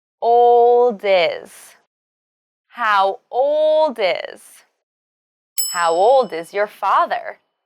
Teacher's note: old is your mother when speaking faster to sound more natural you should link the final sound D of old to the beginning vowel sound I of is